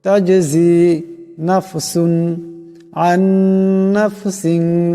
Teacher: নুন সাকিনের পরে নুন আসছে, ঈদগাম হয়ে যাবে, ঈদগামের আকারে পরিমাণ গুণনা হবে। নাফসিন এখানে 2 জেরের তরবিন, এরপরে শিন আসছে, শিন ইকফার হরফ, এখানে ইকফার আকারে পরিমাণ গুণনা হবে।